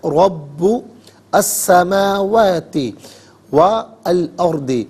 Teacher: واو پر زبر ہے، اس سے الارض کے لام ساکن کے ساتھ ملائیں گے، درمیان میں سے الف یعنی حمزہ کو حذف کیا جائے گا